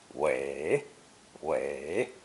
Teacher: this character is a phono semantic compound pronounced third tone